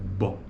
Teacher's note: O ar está sendo obstruído bilabial, pelos dois lábios.